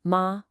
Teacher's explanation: First up, we have the high flat first tone, ma, which means mother. Hear how that pitch just stays up high and level.